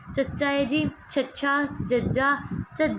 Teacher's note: ਤਾਲਵੀ ਧੁਨੀਆਂ ਇਹ ਧੁਨੀਆਂ ਦਾ ਉਚਾਰਨ ਜਿਹੜਾ ਤਾਲੂ ਤੋਂ ਹੁੰਦਾ ਹੈ ਜੀਭ ਕਟੋਰ ਤਾਲੂ ਨਾਲ ਜੁੜ ਕੇ ਜਿਹੜੀ ਆ ਪੂਰਨ ਰੋਕ ਪਾਉਂਦੀ ਹੈ ਯਾਨੀ ਜਿਹੜੀ ਆਪਣੀ ਜੀਭ ਹੈ ਉਹ ਤਾਲੂ ਦੇ ਨਾਲ ਟੱਚ ਹੁੰਦੀ